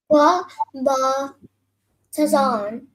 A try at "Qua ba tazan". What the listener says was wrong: Very close. So what was the first part?